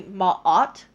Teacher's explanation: when you hear that ma and then there's a little bit of a pause and then that ot, that's a glottal stop